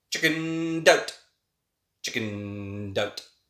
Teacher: the ed connects with the oh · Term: connected speech